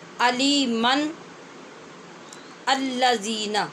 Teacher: حمزہ وصلی ہوتا ہی وہ ہے کہ وصل کا مطلب ملانا ہوتا ہے نا، تو دو کلموں کو ملانے میں جو درمیان میں حمزہ ہوتا ہے وہ گر جاتا ہے، اس کی پھر آواز پڑھی نہیں جاتی